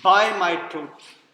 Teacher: By and truth are stressed.